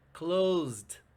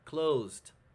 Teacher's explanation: there's a little bit of a t sound closed so pay attention what is to understand when someone tells